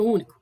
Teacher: nem o ponto é analisar palavra único ela é uma proparoxítona antepenúltima sílaba é a mais forte é a mais intensa é a sílaba tônica portanto ela é acentuada por ser proparoxítona leva uma carga possível